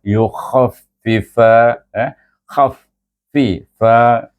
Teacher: kha dia hujung halkum. Jadi bunyi dia lebih ketat sikit bunyinya sebab dia huruf isti'la